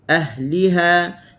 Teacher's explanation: Kita kena tekan di ha untuk kita membezakan antara ahli dengan ha.